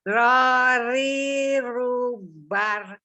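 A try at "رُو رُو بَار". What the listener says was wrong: Jangan bar. Jangan senyum. Jangan senyum. Kalau sekarang ini harus tidak boleh senyum. Bar. Naikin pangkal lidah soalnya. Bar. Bar.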